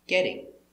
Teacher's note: we see the t from get changes to a d for continuous action